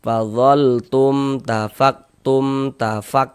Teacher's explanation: Ya, hukumnya izhar syafawi. Dibaca jelas, tak berdengung, baca pendek saja.